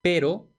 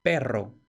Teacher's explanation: En el caso de pero y perro tenemos una percusiva R y tenemos una vibrante múltiple R. Lo demás es todo igual, la P, la E y la O, pero cambia R o R.